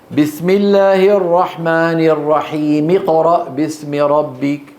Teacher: ويسقط همزه الوصل من اقرا باسم ربك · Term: همزة الوصل